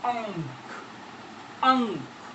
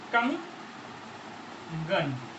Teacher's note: हम यहाँ पर देख रहे हैं कि अनुस्वार जहां पर है उससे अगला वाला हमारा जो वर्ण है वो क है, यानी कंठ वर्ग। कंठ वर्ग होने पर इस अनुस्वार का उच्चारण अंग हो जाएगा। अंग। इस प्रकार से इसको इस प्रकार सही तरीके से लिखा जाता है।